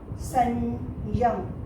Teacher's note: य के ठीक पहले अनुनासिकता आ रही है